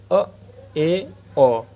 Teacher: अर्ध विवत जिसमें आधा मुह खुला हुआ होता है जैसे अ ए ओ आगे सम्रत मुह लगभग पूरा बंद रहता · अब पढ़ते हैं अर्धविव्रत, जिसमें आधा मुंह खुला हुआ होता है